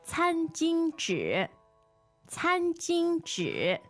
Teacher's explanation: 餐巾, 2 first tones. Yeah. And 纸, 3rd tone.